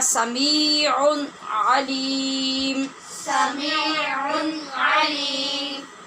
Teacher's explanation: یہاں پر بھی آپ نے دیکھا کہ عین کے اوپر جو دو پیش کی تنوین ہے اس کے بعد پھر علیم کا عین ہے، تو تنوین کے بعد عین حروف حلقی میں سے ہے، لہٰذا اظہار ہوا